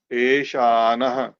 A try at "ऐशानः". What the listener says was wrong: ए है या आई है?